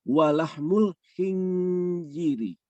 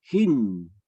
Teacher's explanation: Kita tahu bahwa setelah nun sukun ketemu dengan zai itu akan ikhfa. Tapi kalau misalnya yang belum tahu, ketika nun sukun akan dibacanya menjadi idhar, hin.